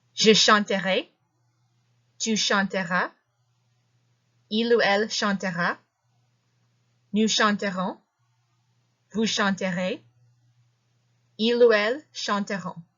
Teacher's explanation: Notice how I was rolling the R's here? That's something that you will find yourself doing a lot when you are pronouncing verbs that are conjugated in the future simple.